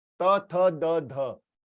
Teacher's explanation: ये जिह्वा की अग्र भाग जो है वो दंत के पीछे की तरफ लग रही है। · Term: दंतव्य